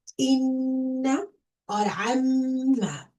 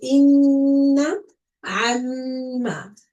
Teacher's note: stretch for 1 second. With a nasal sound, this means a sound from your nose. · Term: Ghunna